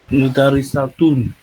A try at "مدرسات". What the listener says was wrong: La dernière lettre doit être tirée. Élongation de mad. Mad alif. non tun simplement, pas tuna. tun.